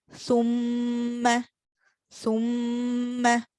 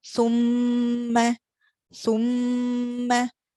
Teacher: with meme shadda, you'll be able to feel that the sound of the meme is coming through your nasal passage.